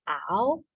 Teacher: There's the ow that begins in the back of the mouth.